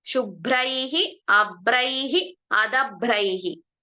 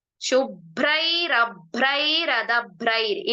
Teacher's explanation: ಇಲ್ಲಿ ಐಹಿ ಅಂತ ಕೊನೆಯಲ್ಲಿ ವಿಸರ್ಗ ಹೇಳ್ತೀವಲ್ವಾ, ಎಲ್ಲ ಕಡೆ ಆ ವಿಸರ್ಗವನ್ನ ತೆಗಿತಾ ಬಂದಾಗ ಅದೇನಾಗತ್ತೆ, ರಕಾರ ಆಗ್ತಾ ಹೋಗುತ್ತೆ